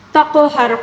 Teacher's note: قاف کو پر پڑھنا ہوگا اور قاف کے اوپر جو ساکن آ گیا تو اس کی وجہ سے ہم ہلا کر یعنی قلقلے کے ساتھ پڑھنا ہوگا